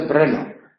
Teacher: la ciudad de Brno, que son dos sílabas. Y aquí la R es el núcleo de la sílaba.